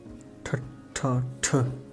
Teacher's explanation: T mit extremem Luftausstoß